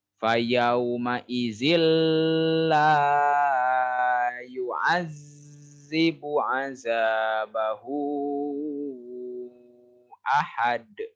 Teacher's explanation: Kalau fayauma izil idgham bila gunah, tidak menggunakan gunah. Gunah teh dengung, tidak mendengung di sini mah ya.